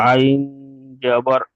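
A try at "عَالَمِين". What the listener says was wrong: আইন খাড়া জাবার, জাবার নয়।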